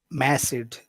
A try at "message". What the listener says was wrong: it's eh eh. It's not eh eh. You're you're you're you're putting the tension too far up in your mouth. It has to go down more. Mesed. Now we're just going to add another sound here, which is a CH. Message.